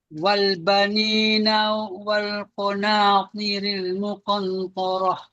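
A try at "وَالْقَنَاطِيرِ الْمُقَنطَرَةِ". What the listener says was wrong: Muqan. Betul ke bacaan muqan? Bunyi dia tak jelas muqan. Nun tu dia tak jelas. Dia bunyi samar-samar. Dia bunyi macam ni. Muqan. Macam tu.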